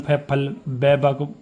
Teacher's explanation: तो इन सभी को अगर आप बोलने की कोशिश करोगे तो इनमें जो आपके होठ है वो बंद होते हैं